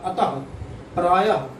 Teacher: और विसर्ग जो होता है इसका उच्चारण स्थान कंठ है, जब हम इसका उच्चारण करते हैं तो हा, हकार निकलता, हा निकलता, अतः, प्रायः जब उच्चारण करेंगे तो हा निकलेगा।